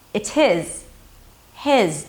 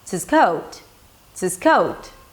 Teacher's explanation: Now, the function words 'he', 'him', 'her' and 'his' are pronounced differently, depending whether they're stressed or unstressed. If they're stressed, the H is absolutely pronounced. If they're not stressed, the H drops. So, for example, if someone were to ask me, "Hey, whose coat is this?" I would say, "It's his." 'his'.